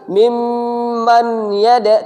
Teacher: tidak boleh lagi dibaca minma. Nunnya hilang ya. Nunnya melebur. Sama dengan tadi mimman yada, tidak dibaca lagi nunnya.